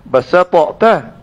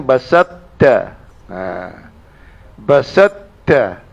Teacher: Adakah kita kena berat pada ta? Dah ta itu dinamakan idgham. Dah ta itu dah dimasukkan dalam ta.